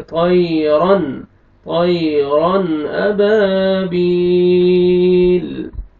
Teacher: تنوین کے بعد حروف حلقی میں سے حمزہ ہے، آپ نے یہاں پہ اظہار کرنا ہے، جلدی پڑھیں گے.